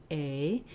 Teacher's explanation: That letter A says the A diphthong. So A in American English is a diphthong. We glide from the tense A to a more lax I, A. Hold it longer and just relax and close your jaw as you're saying it.